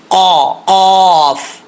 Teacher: وہاں پہ زبان کی جڑ لگے گی تو قاف پڑھا جائے گا